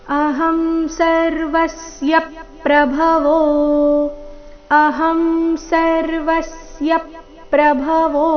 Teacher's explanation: ಸರ್ವಸ್ಯ ನಲ್ಲಿ ವ ಮೇಲೆ ಆಘಾತ ಯ ಮೇಲೆ ಕೂಡ ಆಘಾತ ಬರಬೇಕು ಯಾಕಂದ್ರೆ ಮುಂದಿನ ಶಬ್ದ ಪ್ರಭವೋ ಪ್ರ ಸಂಯುಕ್ತಕ್ಷರದೊಂದಿಗೆ ಪ್ರಾರಂಭ ಆಗ್ತಾ ಇದೆ ಅದಕ್ಕಾಗಿ ಸರ್ವಸ್ಯ